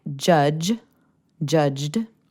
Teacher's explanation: ends with a voiced or vibrating consonant sound